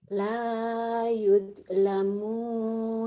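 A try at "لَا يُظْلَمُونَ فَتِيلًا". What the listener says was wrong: Jangan yud, jangan dal. Do.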